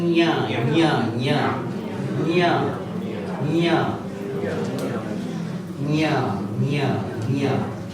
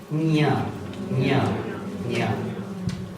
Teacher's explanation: Tongue is touching the talu and you are pronouncing a nasal sound.